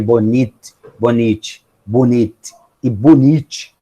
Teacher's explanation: No caso de um t passando a ch, né, o processo que eu tenho, né, é de um elemento que se projeta ao palato, né? Então, eu deixo de ter um elemento alveolar e passo a ter um elemento pós-alveolar ou pré-palatal, né? De alguma maneira, eu tenho uma projeção da língua em relação ao palato. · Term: palatalização